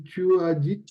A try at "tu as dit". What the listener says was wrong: Tu as dit, on ne prononce pas le T final, d'accord? Alors, on va dire, tu as dit